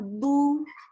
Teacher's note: Itu ada dhammah bertemu dengan waw sukun. Berarti mad tabi'i. Berarti cara membacanya adalah 2 harokat.